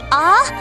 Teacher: In Spanish, it is always a like in father, not a like in English day. Just a open your mouth and say ah.